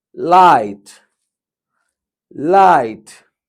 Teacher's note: A is gliding on E. A, E. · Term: diphthong